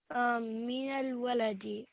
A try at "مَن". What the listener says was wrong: من, not min. من.